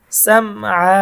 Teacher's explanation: এখানে অক্ফ করার কারণে এক আলিফ টান হবে, সাম আ হবে